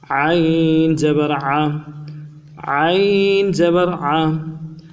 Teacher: عین گلے کے اندر سے جماؤ کے ساتھ، سختی کے ساتھ ادا کرنا ہے، ٹھہراؤ کے ساتھ۔